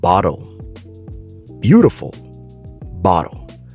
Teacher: when it comes to the American accent, the two T's inside of bottle is pronounced with a D sound.